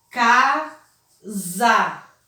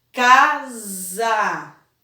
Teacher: pode ver que eu não tenho mais o som de Sa. Ele tem o som de Za.